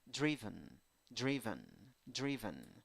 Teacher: you have a driven driven driven a six letters five sounds two syllables the first syllable is the stressed syllable